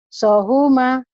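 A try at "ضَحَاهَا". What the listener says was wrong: Ada titiknya, Ibu jangan lupa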